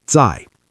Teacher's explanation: 4th tone, sharp and falling